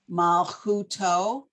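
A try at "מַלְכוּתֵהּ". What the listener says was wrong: Not toe. What's two dots?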